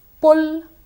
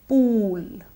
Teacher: The only difference in the two words is the difference in vowel sound. One employs the short oo sound, the other employs the long oo sound.